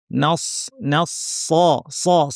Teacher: সদের মাখরাজ হচ্ছে জিহ্বার শীর্ষ নিচের পাটির দাঁতের গোড়ায় লাগিয়ে, যেখান থেকে সিন উচ্চারিত হয় একই জায়গা থেকে সদ উচ্চারিত হয়, কিন্তু সদটা ভারী, আওয়াজটাকে আমরা উপরে ঠেলবো। নাস আবার নুনকে ভারী করে ফেলবো না, নস বলবো না, নস না, নাস নাস স স সদ ভারী করার সাথে ঠোঁট গোল করার কোনো সম্পর্ক নাই।